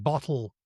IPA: bɒtl̩